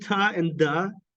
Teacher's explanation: these are alveolar plosives